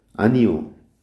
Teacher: 자, 표준 발음 오가 맞는데 이것이 요로 발음되는 것도 허용되어 있어요. 앞에 있는 이의 영향을 받아서 뒤에 있는 오가 요로 이중모음으로 바뀌어서 발음되죠. 이거 이중모음화 현상이라고도 해요.